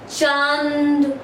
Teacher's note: अनुनासिक का उच्चारण करते समय जो हवा है वो हमारे नाक और मुख दोनों से निकलती है · तो यहाँ पर दोस्तों चंद्र बिंदु, जैसे कि अगर मैं है हमारे पास है चांद, तो अगर आप इसका उच्चारण करेंगे तो देखिए चांद है ना, तो इसका जो उच्चारण है वो किससे हो रहा है, नहीं, तो इसका जो हम उच्चारण कर रहे हैं तो जो हवा है वो हमारे मुख से और नाक से दोनों से निकल रही है।